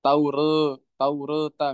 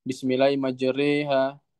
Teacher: imalah sugro ya membaca harokat antara fathah dan kasroh hanya saja dia mendekati fathah